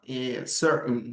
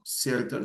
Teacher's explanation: Recuerden la glottal stop. So remember the glottal stop